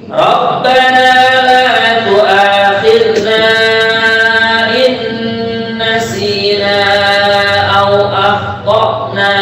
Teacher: Ini ada mad tabi'i berjumpa dengan hamzah di kalimat yang berbeda. Dibaca 4 harokat ya. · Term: mad jaizul munfasil